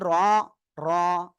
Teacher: বাংলায় সিম্পল র অক্ষরের মতো যদি পড়েন মোটা করে, তাহলে অক্ষরটা সঠিক হবে।